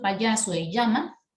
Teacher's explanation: Y en el caso del yeísmo, claro, pronunciar la doble L y la Y, ¿no? De la misma manera.